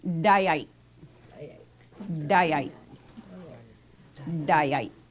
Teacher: We also have a glottalized Y. Once again, equivalent to having that glottal stop after that Y sound.